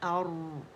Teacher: रॉ मोटा है और हमजा को हमने फार थ्रोट से अदा करें